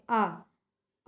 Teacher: आ हमारा पश्च स्वर में आता है ठीक है पश्च स्वर होता है इसमें यह सीधा कंठ से बोला जाता है